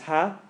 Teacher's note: Make sure it's breathy.